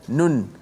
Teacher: Memang bukan sekadar hujung lidah kita naik ke langit huruf nun tu, tapi suara keluar nun tu, suara tu keluar daripada hidung. Itulah suara gunnah.